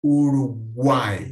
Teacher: termina com mais fraco Então como ficaria o Triton vídeo que uma sequência de três vogais numa mesma sílaba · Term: tritongo